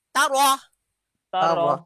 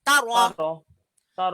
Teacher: রটা মোটা হবে, র উপরে জবর পেশ থাকলে র মোটা হয়